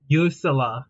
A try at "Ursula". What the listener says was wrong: It's pronounced Ursula, not Yorsula. It's Ursula. Ursula.